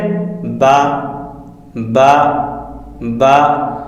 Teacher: با، دونوں ہونٹوں کے گلے حصے سے ادا ہوتا ہے